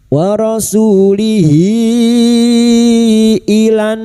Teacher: damir yang berharakat panjang dan bertemu hamzah mad silah thawilah lima harakat kita panjangkan